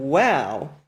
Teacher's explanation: wow denotes the voiced bilabial semi-vowel resembling the English w in water